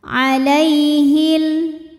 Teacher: karena ada Ya Sukun didahului harakat fathah maka dibacanya lembut atau lunak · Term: huruf Lin